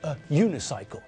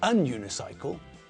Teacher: If we're talking about a bicycle with only one wheel, then we're talking about a unicycle, not an unicycle, because the word sounds like it starts with a y sound, which means that it sounds like it starts with a consonant